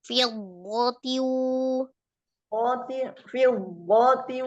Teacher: Jadi dhad sukun dengan dhad fathahnya itu digabungkan di dalam tasdid, itu kan penggabungan antara dua huruf yang sama. Nah, tidak terpisahkan, sama huruf dhadnya sama-sama tebal kan hurufnya juga sama ya.